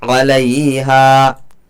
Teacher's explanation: हा अलिफ ज़बर हा, अलिफ मद्दा होगा, अलिफ से पहले हा के ऊपर ज़बर है, थोड़ा सा खींच करके पढ़ा जाएगा